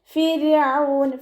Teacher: മുന്നേയുള്ള അക്ഷരത്തിന് കെസ്റ ആയതുകൊണ്ട് നമ്മൾ റായിനെ താഴ്ത്തി ഉച്ചരിക്കുക. ഫിർഔൻ. ഫിറൗൻ എന്ന് പറയരുത്.